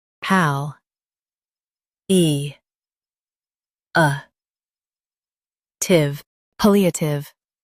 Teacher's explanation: Stress pal and keep eative smooth.